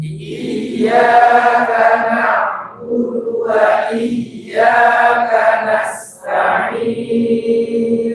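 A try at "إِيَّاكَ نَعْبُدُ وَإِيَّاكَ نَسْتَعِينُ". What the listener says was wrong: Nasta'in. Nunnya tipis na. Jangan no. Kalau kita ucapin na, itu semua sinnya tebal, taknya dua tebal. Nasta'in, nasta'in. Nah, sinnya mengalir. Nasta'in.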